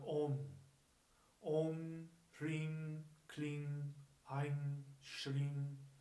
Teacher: They're usually spelled as an M, like the OM, but they're pronounced with an NG.